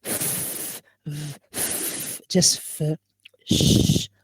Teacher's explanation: you feel no vibration while pronouncing f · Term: voiceless